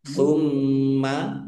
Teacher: Kemudian lamnya di lam fathah berdiri mad thobi'i. Tumma mim tasdid dibaca guna atau mendengung. Ditahan biar tampak dengungannya.